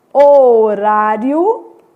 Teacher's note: o i é semivogal depois uma vogal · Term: crescente